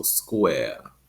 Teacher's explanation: And then in received pronunciation, as well as the transatlantic accent, both Eastern Standard American English and American Theater Standard, that R sound is replaced by a schwa